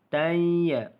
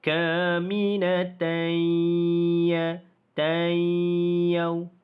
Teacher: Tai. Tanwin itu sudah pun dimasukkan ke dalam huruf ya. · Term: idgham ma'al gunnah